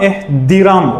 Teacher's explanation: T olacaq D tələffüz zamanı.